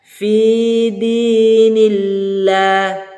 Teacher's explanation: Ini perhatikan huruf Allah. Huruf sebelumnya berharokat kasroh berbaris bawah. Maka cara penyebutan huruf Allah, lafaz Allahnya ditipiskan.